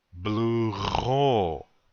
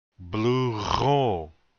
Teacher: the accent is on the second syllable